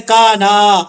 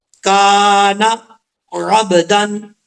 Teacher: اور آگے ہے عبدن، اب اکثر لوگ پڑھتے ہیں کانا، ایسا نہیں کرنا، نون کو لمبا نہیں کرنا، الف جو ہے وہ کاف کے آگے ہے، کاف کو لمبا کریں گے، نون کو لمبا کرنے کی ضرورت نہیں ہے